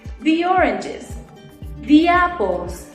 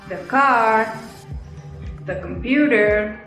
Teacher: si la palabra que sigue comienza en un sonido de vocal decimos di